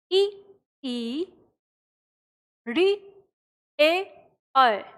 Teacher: जिन स्वरों के उच्चारण में जीभ का अग्र भाग प्रयोग में आता है उन्हें अग्र स्वर कहते हैं